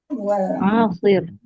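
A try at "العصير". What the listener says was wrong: Ainnya pendek. Ain, sod, dan ya. Ain, sod, ya, ro. Ainnya pendek. Ya, dalam hal ini pakai alif lam berarti ya.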